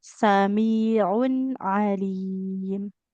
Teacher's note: tanwinnya kan ada bunyi nun sukunnya nggak boleh memantul